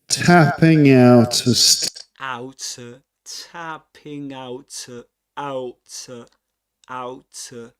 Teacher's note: Final consonant in out gets connected to, gets linked to the next vowel sound. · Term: catenation